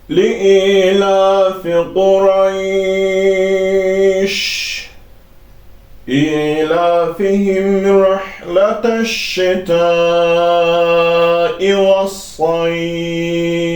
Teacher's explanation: Ancaq oxunuş cəhətindən bu ayələrin sonunda biz durduğumuz zaman cəzmli olaraq duracaq. Artıq bu cəzm gələndə bunlar, bu hərəkələr düşür. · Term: məddilin